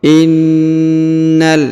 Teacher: Perhatikan huruf na ditahan dan ditekan ya, karena terdapat tanda tasdid. Lalu setelah itu langsung masuk ke huruf lam ya, langsung lompat ke sini.